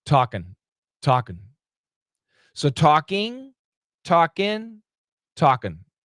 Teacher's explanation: But the most common pronunciation for Americans is actually a schwa n.